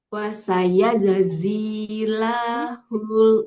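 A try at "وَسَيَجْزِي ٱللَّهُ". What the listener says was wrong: Zainya jangan panjang, Bu. Pantulkan dulu huruf jimnya. Baru masuk ke lamnya. Jadi setelah kalau di bahasa Indonesia abis J langsung ke Z ya.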